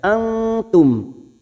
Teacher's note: nun sukun bertemu ta ikhfa hakiki, ini juga disebut dengan ikhfa aqrab karena makhrajnya yang dekat dengan nun, ya, pada ujung lidah.